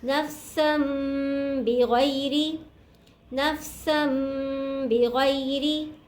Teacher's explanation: के ऊपर छोटा सा मीम नज़र आ रहा है आपको, तो इसको हमने मीम से मिलाकर पढ़ना है गुन्ने के साथ